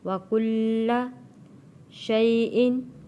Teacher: یا ساکن سے پہلے زبر ہے، حروف لین ہے۔ حروف لین کو ہم نے جلدی اور نرمی کے ساتھ ادا کرنا ہے، اور یہاں تنوین ہے اور تنوین کے اگلا حرف حروف ہلکی آ گیا ہے، تو یہاں ہم نے غنہ ادا نہیں کرنا۔